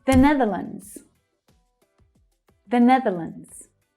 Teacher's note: So we have an unstressed 'the', followed by the stressed syllable